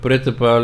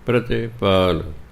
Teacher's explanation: ਤੱਤੇ ਨੂੰ ਸਿਹਾਰੀ ਬੋਲਣੀ ਹੈ, ਪਰ ਥੋੜ੍ਹੀ ਬੋਲਣੀ। ਬਿਹਾਰੀ ਦੀ ਤਰ੍ਹਾਂ ਨਹੀਂ ਬੋਲਦੇ ਨੇ।